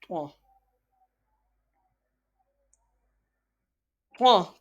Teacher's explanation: Twa is pronounced from the tip of tongue touching the root of top two front teeth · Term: thicker voice